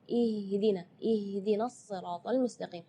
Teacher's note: Ya, itu tidak boleh, itu keluarnya dari dada. Sedangkan makhraj huruf H itu adalah dari tenggorokan. Jadi keluarnya tipis